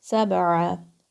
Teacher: Ain from the middle of your throat.